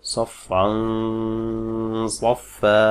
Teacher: সদ কিন্তু মুস্তালিয়ার হরফ, মোটা হরফ, যে কারণে সদের গুন্নাটাও কিন্তু মোটা হবে।